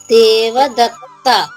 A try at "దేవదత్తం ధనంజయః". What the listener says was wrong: దేవదత్తన్ ధనంజయ. Bracket లో అక్షరం కూడా పలకాలి.